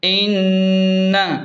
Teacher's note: نون پر تشدید ہے تو یہاں خوبصورت غنہ کریں گے، اسے جلدی نہیں چھوڑنا، اسے جلدی نہیں پڑھنا۔